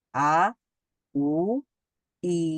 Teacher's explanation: তো আ বলার সময় জিহ্বাটা সমান থাকছে, উ বলার সময় গোল গোল হয়ে যাচ্ছে ঠোঁট এবং জিহ্বাটা কিছুটা উপরের দিকে উঠছে, শেষের দিকে বা গোড়ার দিকে। আর ই বলার সময় জিহ্বার মধ্যভাগটা অনেকটাই তালুর কাছাকাছি চলে যাচ্ছে, কিন্তু লাগছে না, এবং আমাদের ঠোঁটটা প্রসারিত হচ্ছে দুই পাশে ই বলার সময়।